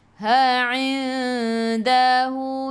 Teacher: Jadi ikhfa hakiki, dengung 2 harakat, bawa ke sisi huruf dal.